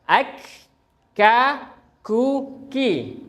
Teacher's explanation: Jadi pangkal bertemu dengan langit-langit yang keras. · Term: kaf